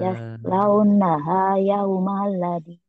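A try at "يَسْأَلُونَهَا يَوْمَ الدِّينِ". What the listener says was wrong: yaslaunaha yaumaddin bukan yaumaladi kan alif lamnya aya barisan. Ininya alif lamnya nggak ada barisnya. Yaslaunaha yaumaddin.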